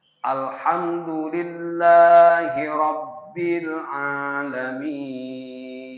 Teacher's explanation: alif lam tidak dipantulkan dengan le